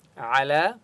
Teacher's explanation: عین کی آواز حلق سے نکالیں گے، لام کو ایک الف کی مقدار کھینچ کر پڑھیں گے۔